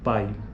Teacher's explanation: é um ditongo decrescente porque veja o pico da sílaba já aconteceu já ocorreu no A